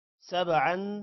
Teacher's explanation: با پر قلقلہ ہوگا عن پر غنہ ہوگا